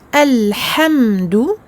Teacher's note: Le lam se lit, il n'est pas muet parce que le ha est une lettre qamariya, lunaire.